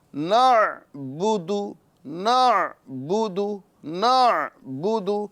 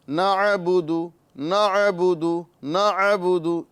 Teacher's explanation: ساتھ ہی ساتھ عین ساکن ہے، لہذا نعبد نعبد نعبد، یہاں پر عین ساکن کرنا ہے، اس میں قلقلہ نہیں کرنا ہے، یعنی نعبد نعبد نعبد اس طرح نہیں کرنا ہے، کیونکہ عین نکالنے والے بھی کئی ایسے حضرات ہوتے ہیں جو عین کی ادائیگی تو کر رہے ہوتے ہیں لیکن عین کو ساکن کرنے میں وہ قاصر ہوتے ہیں.